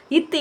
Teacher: இவ்விரண்டும், நாவின் நுனி, மேல்வாய் பல்லின் அடிப்பகுதியை தொடுவதால் பிறக்கின்றன. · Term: இணை எழுத்துக்கள்